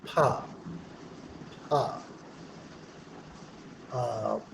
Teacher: Before the flow of air comes, there is a total closure at lips. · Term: stop sound